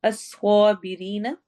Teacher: الصابرین، صاد موٹا پڑھا جائے گا، اسوا، اسا نہیں پڑھنا، اسوا پڑھیں گے کیونکہ سواد موٹا ہے۔